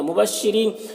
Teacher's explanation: را کو باریک پڑھیں گے، یا مدہ ہے، ایک الف کے برابر کھینچیں گے